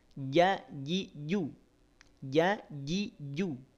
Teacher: cara melafalkan huruf jim dari tengah lidah, naikin. Arahkan ke langit-langit.